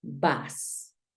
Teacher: Ya vamos corrigiendo el sonido porque tampoco es una A, pero tampoco es una O.